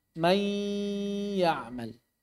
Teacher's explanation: Kita sudah mengucapkan ya, mai, tapi suara gunnah nunnya masih ada. Dari hidung masih ada suara. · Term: idgham naqis